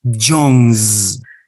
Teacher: Why do we produce the sound Z instead of S? Because of the vibration. John finishes in a voice sound.